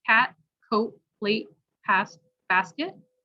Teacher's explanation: a held tee which is like uh the air isn't released so it sounds much softer